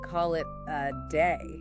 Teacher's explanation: that middle A in a day often sounds more like, ah